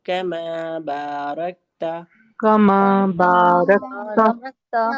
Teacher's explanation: را کو موٹا کریں گے لیکن کاف کو ہم باریک پڑھیں گے